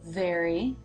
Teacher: It is very, with the Here the tongue position appears to be slightly different, and that is because the tongue is beginning to move into position for the R consonant sound in very, even as the jaw has dropped for the as in bed vowel. So the tongue does not stay down in the position long.